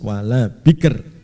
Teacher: Nah, ini kalau diwakafkan wala bikr tipis ya. Karena sebelum sukun itu berupa kasroh. Jadi kalau sebelumnya itu kasroh itu tipis, kalau sebelumnya itu selain kasroh fathah atau dhammah nanti dibaca tebal.